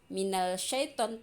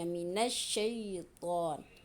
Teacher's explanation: Huruf alif lam tidak dibaca dengan jelas. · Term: alif lam syamsiyah